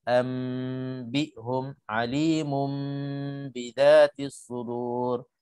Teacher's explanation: Iqlab maknanya kita tukarkan nun menjadi huruf mim sebab ba itu keluarnya dari 2 bibi mulut sama dengan mim.